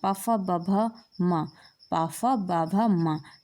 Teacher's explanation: ओट में हमारे प वर्ग आता है प फ ब भ म प फ ब भ मा ये हमारे ओट में आते हैं